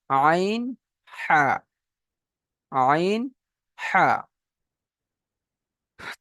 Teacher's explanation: হালাক বা কণ্ঠনালীর মাঝখান হতে উচ্চারণ হয় আইন হা